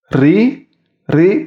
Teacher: Kemudian tarqiq atau ri dibaca tipis. Apabila terdapat tanda baca kasrah dibaca tipis atau tarqiq. Itu lidah depannya bertemu dengan langit-langit atas dekat gigi seri. Ri. Ri.